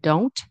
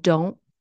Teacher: I said don't, pronouncing the T, and don't with the glottal stop.